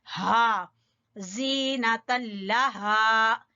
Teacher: ہا اقصا حلق سے اور ساتھ الف مدہ